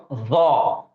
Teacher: اور یہ جو ضا ہے اس کو زبان کی نوک, جیسا ہم فا زال پڑھتے ویسا ہی اس کو پڑھنا ہے ضا, لیکن موٹا پڑھنا ہے, زبان کی نوک اور دونوں دانتوں کا کنارہ.